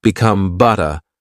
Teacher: Words like butter become butta, with a gentle T sound instead of a hard D sound.